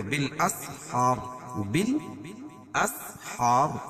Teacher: وقفہ کی صورت میں را ساکن ماقبل ساکن اس سے پہلے زبر ہے تو را پور پڑی جائے گی